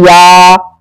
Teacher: जबान का बीच और उसके मुकाबिल ऊपर का तालु